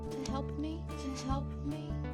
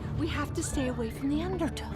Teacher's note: The preposition to often gets reduced simply to ta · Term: native reduction